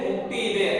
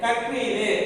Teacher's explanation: ஆயத்த எழுத்தான அக் என்கின்ற எழுத்து தன்னுடைய மாத்திரை அளவு அரை மாத்திரையிலிருந்து குறைந்து கால் மாத்திரை அளவாக ஒலிக்கிறது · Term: ஆயத்த குறுக்கம்